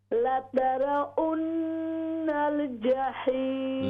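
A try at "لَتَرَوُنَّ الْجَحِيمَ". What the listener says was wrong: लतरवुन वाव लतरवुन्नल जहीम लतरवुन वाव लतरवुन्नल जहीम ये लतारा वन वाव नून पेश वन लतारा उन नहीं है, लतारा उन आप पढ़ेंगे तो वो हमज़ा की आवाज़ है, यहाँ पर वाव है। लतारा वुन्नल जहीम।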